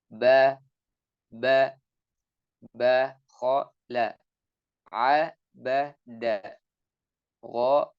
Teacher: Adapun huruf ba dan huruf mim setelahnya ini dengan menyentuhkan dua bibir.